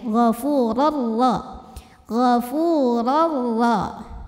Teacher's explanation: Karena tanwin fathah bertemu ra. Maka cara bacanya adalah tanwinnya masuk ke ra tanpa didengungkan. Dengan kata lain ini nggak perlu menahan bunyinya ya. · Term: idgham bila gunnah